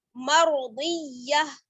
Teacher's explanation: मर्दिया नहीं पढ़ना है, रा को मोटा पढ़ना है